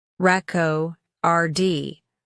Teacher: the stress is on the first syllable when used as a noun, reco, rd, but the stress shifts to the second syllable when it's used as a verb, rico.rd.